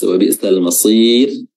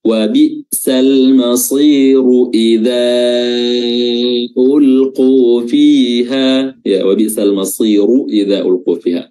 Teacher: Nah, kita harus tebal ra-nya karena dia berharakat dhammah. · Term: huruf ra-nya ini harus tebal